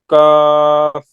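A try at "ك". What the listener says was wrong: Yeah, this one is kaf, like king, king.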